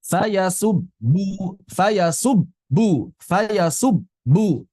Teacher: Fayasubbu, yub, itu tidak boleh mengalir. Karena dia bukan rakhwah, juga bukan bainiyah.